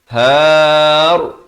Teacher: Mestilah 2 harakat dengung barulah nahar. Dan kalau waqaf ra ni jadi tebal